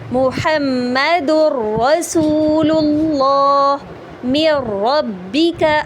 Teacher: نون ساکن کو را میں مدغم تو کر رہی ہوں، یعنی داخل تو کر رہی ہوں، ادغام تو کر رہی ہوں، لیکن مع غنہ نہیں کر رہی، یعنی غنہ ساتھ میں رن نہیں کر رہی۔ · تنوین کو را کے اندر شامل تو کر رہی ہوں لیکن اس کے اندر غنہ رن نہیں کر رہی